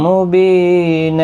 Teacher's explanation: اور بی یا مدہ ہے، 1 الف کی مقدار کے برابر کھینچیں گے۔ نا 2 زبر کو بدل کر 1 زبر کے ساتھ پڑھیں گے، الف مدہ بنے گا، 1 الف کی مقدار کے برابر کھینچ کر وقف کریں گے، اور ملانے کی صورت میں ادغام مع الغنہ ہوگا۔